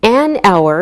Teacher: take a look at some examples we say an hour because we don't pronounce the H so it sounds like a vowel sound